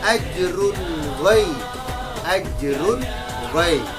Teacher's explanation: tanwin bertemu dengan ghaib maka dibaca dengan izhar